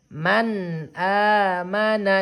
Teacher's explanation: ndak boleh ditahan, ndak boleh didengungkan. Jadi sempurnakan bunyi suara nun sukunnya. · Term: izhar halki